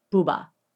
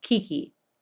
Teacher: But the very shape of your mouth will back you up. Your mouth itself becomes either more rounded when saying BOUBA or more straight when saying KIKI.